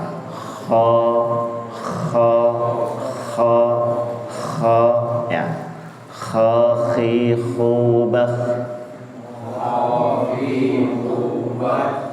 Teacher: Jadi memang harus ada getarannya, tapi tidak separah ya.